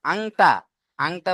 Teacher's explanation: আংটা বলতে গিয়ে নাকের মধ্যে একটা আওয়াজ চলে যায়, ওই রকম আওয়াজটা নাকের মধ্যে গিয়ে উঠবে। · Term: ইকফা